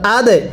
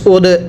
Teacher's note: দালটা ধাক্কা দিয়ে পড়ব, কারণ দালটা কলকলা হরফ